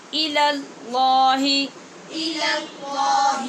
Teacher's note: پہلے لام کو باریک اور بعد والے دوسرے کو پر پڑھنا ہے